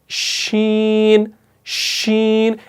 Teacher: तो देखिए जब आप शीन को अदा करते हैं ना, शीन शीन, इसमें ऊपर जुबान और हार्ड पैलेट के दरमियान में गैप रह रही है, और उस गैप के जरिए आपका एयर फ्लो जो है ना वो पास हो रहा है।